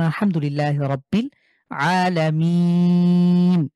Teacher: শেষে ওয়াকফ করার কারণে আমরা ৩ আলিফ টেনে পড়ব।